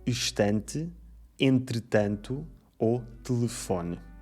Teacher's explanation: o chamado E mudo, que hoje em dia praticamente não se pronuncia e que vemos em palavras como estante, entretanto ou telefone. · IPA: ɨ